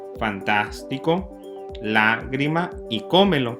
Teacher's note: Todas llevan su énfasis en la antepenúltima sílaba. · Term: esdrújulas